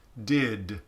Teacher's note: And it would be if you had something voiced at the end of something, you could have a little tiny schwa that says did, where it's almost this off glide, where you're doing this shadow vowel